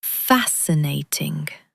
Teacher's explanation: Pronunciation tip. The SC is just a soft S sound and emphasize the first syllable.